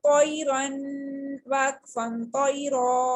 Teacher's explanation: اب چونکہ لین لیٹر کے نیکسٹ میں را ہے اور را کے اوپر 2 زبر یعنی تنوین ہے، تو اس کا یہ رول ہے کہ اس کو وقفن میں 1 زبر اور اسٹریچ کر کے ریڈ کرتے ہیں، 1 فنگر کھینچ کے پڑھتے ہیں. تو را دونوں صورتوں میں موٹی پڑھی جائے گی، بولڈ ہی ریڈ ہوگی. کمپلیٹ پڑھیں گے تنوین کے ساتھ تو بھی، اور اس کو 1 فنگر اسٹریچ کریں گے وقفن کی صورت میں تو بھی یہ موٹی ہی پڑھی جائے گی.